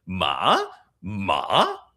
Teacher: The fourth tone is denoted by this super aesthetic hook on top, and it does a little dip and then rises. It's basically broken in the middle.